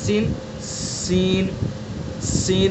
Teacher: زبان کی نوک اور ثنا سفلی کا کنارہ اور کچھ اتصال ثنا علیہ سے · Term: زا سین کا مخرج